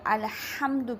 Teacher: الحمد میں ہا جو ہے وہ وسط حلق سے ادا ہوتی ہے، لیکن ہا کا مخرج درست ادا نہ کیا جائے اور ہا کی بجائے ہا پڑھ دیا جائے اور الحمد کی بجائے الحمد پڑھ دیا جائے تو یہ حرام ہے۔